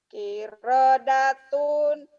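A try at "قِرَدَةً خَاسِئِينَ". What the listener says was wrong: Tan, bukan tuh. Kirodatan, bukan kirodatun.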